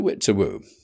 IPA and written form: tə.ˈwɪt tə.ˈwuː (too-wit too-woo)